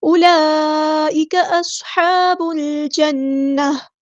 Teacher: اولئک نہیں پڑھنا، اولئک، یہ واؤ کی ساؤنڈ نہیں آئے گی، یہ واؤ جو ہے واؤ مدہ نہیں ہے. اولئک، یہاں پر مد جو ہے وہ مد متصل یعنی کنیکٹڈ مد ہے، اسے 4 یا 5 کاؤنٹ ہمیں لمبا کرنا ہے. اولئک اصحاب الجنہ.